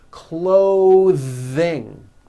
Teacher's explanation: Notice how my tongue comes out in the middle of the word and the TH sound is pushed out. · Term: voiced TH sounds